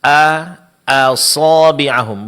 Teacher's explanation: hamzah tidak boleh terpengaruh menjadi tebal karena ketebalan huruf shad setelahnya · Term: hamzah di sini tipis